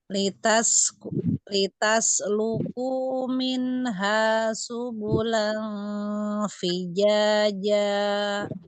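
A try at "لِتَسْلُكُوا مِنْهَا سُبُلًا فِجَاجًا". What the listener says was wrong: Minha, bukan min, tapi mi. Minha subulan fijaja.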